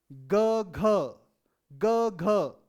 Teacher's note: जब ग और घ का उच्चारण करेंगे तो आपको लगेगा कि आपकी साउंड में एक बेस आ गया है।